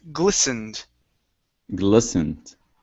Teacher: Now here, this T is silent. Instead of glistened, it's glistened.